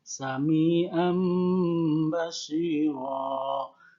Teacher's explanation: nun sukunnya tidak dibaca nun, tapi berubah menjadi mim atau m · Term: iklab